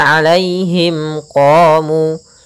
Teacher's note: mim mati bertemu qaf, maka ini kita namakan dengan bacaan izhar syafawi, yaitu suara mimnya harus jelas. Kemudian qamu, qa ada fathah bertemu alif, yaitu mad tabi'i.